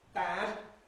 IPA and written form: bæd (bad)